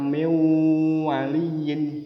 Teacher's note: harus dengung seolah-olah huruf w-nya atau wawunnya dobel